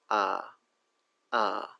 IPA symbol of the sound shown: ʌ